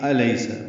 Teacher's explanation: حمزہ اقصی حلق سے بلند آواز سے ادا کریں گے